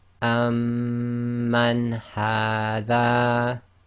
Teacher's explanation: the Noon Saakin is followed by one of the throat letters, so it's pronounced clearly, i.e. Izhar.